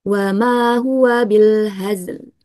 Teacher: membaca dua huruf sukun. Zai dan lamnya harus ditunaikan sifat-sifatnya. Zainya harus dialirkan, huruf lamnya dibayinahkan ya. · Nah, yang perlu diperhatikan apa ketika membaca dua sukun ini, kita tidak boleh menambahkan vokal E di antara kedua sukun tersebut